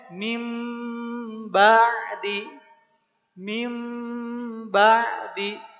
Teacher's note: Iqlab artinya merubah. Merubah bunyi nun sukun atau tanwin ya menjadi mim.